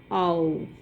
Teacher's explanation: Here it starts from the position of A to that of U, so that it becomes ow. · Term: closing diphthongs